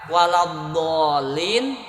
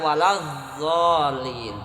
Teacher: Maka beda, maka kedengaran akan sangat jelas beda kalau ada orang baca waladdallin dibaca waladzallin. Karena kalau dod dari pinggir lidah nempel ke gigi geraham bagian atas, sementara zo ujung lidah nempel ke ujung gigi bagian atas.